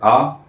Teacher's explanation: विवृत्त जिसके उच्चारण करते समय मुख द्वार पूरा खुल जाता है।